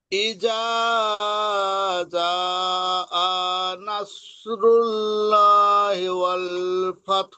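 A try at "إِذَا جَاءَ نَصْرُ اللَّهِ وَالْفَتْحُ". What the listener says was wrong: এখানে ল বলবে, নাসরুল্লাহ। আর এই এই হামজাটা টান হয়ে গেছে আপনার, হামজাতে টান হবে না। জি, ইদা জাআ নাসরুল্লাহি, আনাসরুল্লাহি, যাতে টান দিয়ে জাআ নাসরুল্লাহি ওয়াল ফাত।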